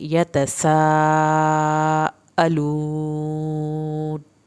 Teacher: सीन को सीटी की आवाज़ के साथ, सा मद्द वाजिब 3 अलिफ के बराबर लंबी करनी है।